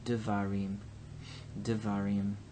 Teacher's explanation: So there's no problem here. But when we add the plural ending, then the tonic syllable shifts now to the im. This syllable then becomes pretonic.